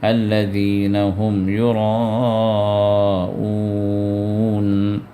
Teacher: اب یہاں پر الذین مثال ہے، هم یراءون، تو یہاں پر یراءون حمزہ ہے اور مد ہے، مد متصل، جو 4 یا 5 حرکت کھینچنا واجب ہے،